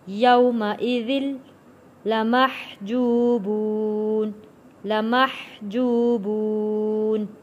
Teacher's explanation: یہاں پہ ذال جڑے گا تشدید والے لام کے ساتھ